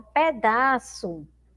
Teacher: pedaço também aí terminando aí essa sílaba com som de u